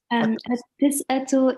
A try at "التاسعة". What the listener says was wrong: التاسع. There's alif there. التاسع.